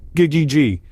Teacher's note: It's like a mini explosion of sound from the back of your mouth. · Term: G sound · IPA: /g/